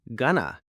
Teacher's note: It's just a quicker, more natural way that native speakers often say it. Instead of pronouncing each word distinctly, going to, we kind of mush them together into gonna.